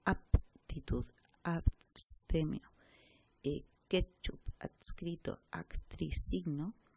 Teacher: Se neutraliza el contraste de sonoridad de la serie de las oclusivas. Esto quiere decir que en posición final de la sílaba, el rasgo sonoro sordo desaparece como rasgo distintivo. · se sonorizan, por decirlo así, la P se sonoriza y se pierde la diferencia con la B, que es la sonoridad. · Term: neutralización de las oclusivas